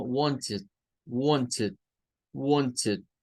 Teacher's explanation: Es decir, hay una tercera sonido que se puede hacer de esa, que sería como wanted, wanted, wanted, con el i, con el schwa, algo así, con el sonido de schwa y la d, y d, wanted, wanted, wanted. Nuestro oído a veces nos engaña y nos podría hacer pensar que están sonando una E, pero es el schwa, es el schwa.